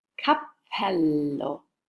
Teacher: a double consonant you prolong the sound so you lengthen the double consonant sound